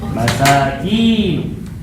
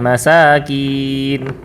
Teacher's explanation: Kalau kinya panjang, masakin. Baru menjadi orang-orang miskin.